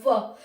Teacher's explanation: व को हम दंतोस्त कहते हैं, दांत और ओष्ठ दोनों चलते हैं व को बोलने में